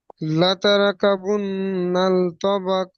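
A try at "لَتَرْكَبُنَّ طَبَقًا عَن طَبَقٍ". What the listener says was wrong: নাল, নাল হবে না, লাতার কাবুন্না তবাকন তবাক।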